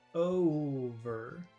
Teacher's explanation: that's very long o it's two sounds o over and then the second vowel sound is short over